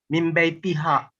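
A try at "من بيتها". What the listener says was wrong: This is now it's okay. Now ha, it's not awkward to say.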